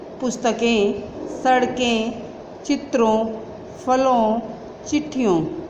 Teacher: तो दो इनको पढ़ते हुए हम बोलकर देखते हैं, हाथ लगाइए आप, तो हमें महसूस होगा कि इसमें से जो हवा निकल रही है, आवाज़ जो निकल रही है वो नाक व मुंह दोनों से निकल रही है, नाक व मुंह दोनों से निकल रही है।